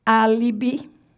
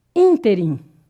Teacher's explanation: Proparoxítonas. Proparoxítona, sílaba tônica recai na antepenúltima, na terceirinha de lá para cá.